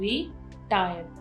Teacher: अब री के ऊपर कोई भी स्ट्रेस नहीं है, टायर, टायर के ऊपर स्ट्रेस है, तो यहाँ पर जो है हमने इसको डबल नहीं किया क्योंकि जो स्ट्रेस है वो सेकेंड सिलेबल के ऊपर है, ठीक है, जिसका थोड़ा सा लंबा साउंड है.